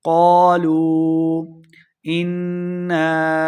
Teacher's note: لو لام پیش واو، لو واو مد ہے، اس کے اوپر مد بھی ہے تو ہم نے اس کو لمبا کرنا ہے۔ قالوا انا، نون مشدد ہے، غنہ کریں گے